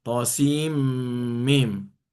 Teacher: Contoh asohah itu ada tasydid th sin mim ya pertemuan antara nun sukun dengan mim maka nunnya melebur ke mim. Jadi ditasdidkan kepada mim thosim mim.